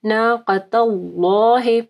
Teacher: پھر ناقۃ اللہ، یہاں پہ دیکھیں اللہ کے نام سے پہلے تا کے اوپر زبر ہے تو یہاں پہ بھی اللہ کا نام جو ہے وہ پر پڑا جائے گا، ٹھیک ہے، اور قاف کو موٹا پڑھنا ہے۔ ناقۃ اللہ، پہلا ہی لام کو جو ہے نا ہیوی پڑھنا ہے